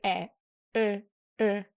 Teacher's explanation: So to make that sound, you make an O shape and you say e, e.